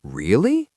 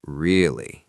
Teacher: if I'm surprised, I might say really with a high voice, but if I'm bored, I might say really with a flat voice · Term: intonation